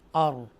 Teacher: because रॉ साकिना तो है लेकिन उससे पहले ज़बर है, तो हम उसकी वजह से इस रॉ को पुर पढ़ेंगे, स्ट्रॉन्ग पढ़ेंगे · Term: तफकीम